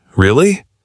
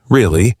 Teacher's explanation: If your voice goes down at the end, really, it sounds like a statement.